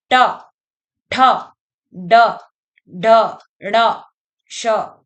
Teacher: मुर्धा तालू के ऊपर के भाग यानी कि वहां पे हमारी जीभ आके टकराती है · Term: मूर्धन्य वर्ण